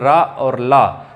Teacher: रा और ला दोनों में हमारी जीभ जो है वो दांतों के मसूड़ों को स्पर्श कर रही है। दांतों को तो कर ही रही है, साथ में हल्के से मसूड़ों को भी स्पर्श कर रही है, इसीलिए कहलाते हैं दंत मूल, मतलब दांतों की जड़ को स्पर्श कर रहे हैं, इसीलिए कहलाते हैं दंत मूल।